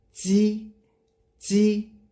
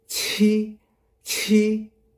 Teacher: The pronunciation for this pinyin, it sounds like the G, but you have to make the air come out from your mouth · When you say G, G, no air come out. When you say qi, qi, let the air come out.